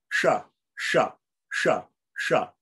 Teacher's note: And then the S with the dot under it, the cerebral one, the tongue, the tip of the tongue flips back and points to the top of the roof of the mouth, the palate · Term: retroflex or cerebral